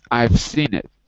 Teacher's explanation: we run them together the consonant v next to the consonants s and we don't say the e between them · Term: consonant to consonant